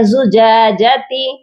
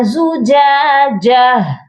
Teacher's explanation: تو ہم نے یہاں پر جب وقف کرنا ہے تو ہا کو سائلنٹ کریں گے، تا کو نہیں پڑھیں گے. یہاں پر وقف کیا جائے گا زجاجہ.